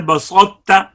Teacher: طا کی صفت استعلاء اور اطباق کو باقی رکھ کر ادغام کرنا ہوگا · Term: ادغام ناقص